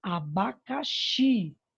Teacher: Também aqui nós temos um exemplo de oxítona. Abacaxi, a sílaba mais forte, a sílaba tônica é o xi. Então, logo, abacaxi é uma palavrinha oxítona também.